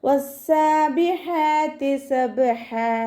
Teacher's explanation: 2 count നീട്ടിക്കൊടുക്കുക. ഹാഇൻ്റെ മഖ്റജ് വസത്തുൽ ഹൽക്കാണ്. സൗണ്ടിനെ ഹംസയായി പോവാതെ ശ്രദ്ധിക്കുക.